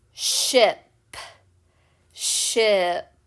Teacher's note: feels like your mouth is smiling a little bit and you're your teeth are closer together then that's the short i sound